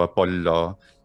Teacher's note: the geminated L, la, just like Italian and Japanese has some geminated consonants